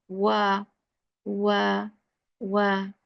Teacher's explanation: Unlengthened wow is articulated by forming a circle of the two lips without the two lips meeting completely